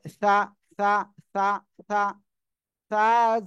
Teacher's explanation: আমাদের জিহ্বার আগাটা সামনের উপরে দুই দাঁতের আগার সাথে লাগবে